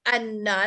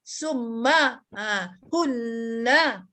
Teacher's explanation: Nun yang bersabdu dan mim yang bersabdu ni dia single lah, dia huruf dia single tu bersabdu. Maka kita kena baca dengan dengung mengikut huruf sebelumnya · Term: wajib gunnah